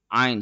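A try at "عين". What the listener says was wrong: No, the a sound should be removed,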